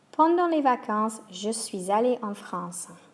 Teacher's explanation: We can hear a little liaison there, which is a Z sound.